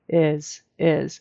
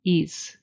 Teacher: Americans will pronounce that with a short I, is. And a lot of times someone who is not a native speaker will turn that into like an E sound. Ease, just slightly like an ease, instead of a really good is.